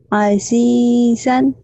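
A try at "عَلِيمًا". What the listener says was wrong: Aliman kok Azizan? Bedanya ini Alif, ini Ain. Berarti ini Ain. Ain.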